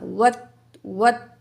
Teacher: واو زبرتا وت، الف کو نہیں پڑھیں گے، وات نہیں پڑھنا